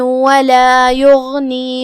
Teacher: کلمت یغنی میں یہاں حرف الغین ہے، غین کی ادائیگی حلق کے اوپر والے حصے سے ہے، وہ حروف تفخیم میں سے بھی ہے تو ہم اسے بھاری آواز میں ادا کریں گے اور جو کہ اس پہ جزم ہے تو اس کا دھیان رہے.